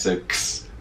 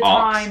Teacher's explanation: And apparently it's linguistically easier for your mouth. It's easier to go from K to S, so X, than it is to go from S to K, sk. So some, Londoners will say ask instead of ask.